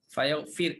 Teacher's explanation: bacaan Ibnu Katsir dia baca dengan matikan ra